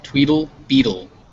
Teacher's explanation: sound actually is um it's called a tap and it's very it's kind of halfway between a t and a d · your tongue just comes up and strikes the roof of your mouth and then you go straight to a o sound so you